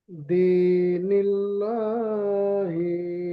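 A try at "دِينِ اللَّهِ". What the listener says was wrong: আচ্ছা, এখানটা দিনিল ল হবে না লা হবে, খেয়াল করেন। হ্যাঁ, তাহলে সেরকম পড়েন। একটু পরিষ্কার ভাবে বলে দিই, দিনিল্লাহি।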